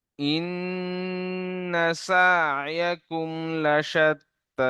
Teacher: প্রথমে ইন, নুন তাসদিদ অজীব গুন্না, এবং দুবার পড়তে হবে, একবার ডান দিকে অক্ষর একবার নিজেকে।